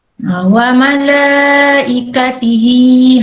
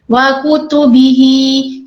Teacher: Bila tak ada huruf hamzah, dia jadi mad silah qasirah, mad silah yang pendek. Jadi bacaannya pun pendek.